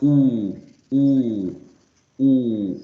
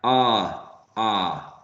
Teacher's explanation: with ah, actually you have to open wide your mouth. So you're not actually making a circle. You're not shaping your mouth as a circle, but it's being open wide.